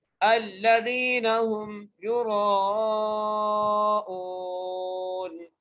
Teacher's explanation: حمزہ کے بعد واو مدہ ہے اس لیے حمزہ کو کھینچ کر پڑھیں گے